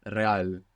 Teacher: When we have an R at the beginning, you might hear it like a rolling R.